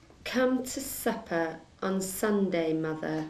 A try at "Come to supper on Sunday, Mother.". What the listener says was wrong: Supper went very thin. Supper.